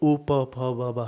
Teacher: जो उ प फ ब ब है इनका ओठ ओष्ठ से होता है